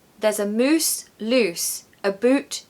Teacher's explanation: that ow sound turns to ooh in the Scottish accent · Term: the ow sound